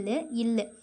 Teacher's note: மேல்வாய் பல்லின் அடியை நாக்கின் ஓரங்கள் தடித்து நெருங்குவதால் பிறக்கிறது குண்டு இல்லுன்னு சொல்றோமா சோ குண்டுனாலே கொஞ்சம் தடிச்சிருக்கும் அப்படின்னு ஞாபகம் வச்சுக்கோங்க ஷார்ட்கட் · இது மேல்வாய் பல்லின் அடியை நாக்கின் ஓரங்கள் தடித்து நெருங்குவதால் பிறக்கிறது